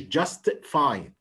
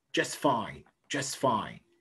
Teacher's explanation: يبقى ده برضو اسمه ايه في الconnected speech؟ اسمه elision. التاه sound is deleted.